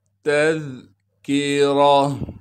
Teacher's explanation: کاف کو باریک کر کے پڑھنا ہے، را پر زبر آنے کی وجہ سے اب را کو ہم موٹا پڑھیں گے۔ گول تا پر جب وقف کیا تو پھر گول تا کو ہم ہا بنا دیں گے۔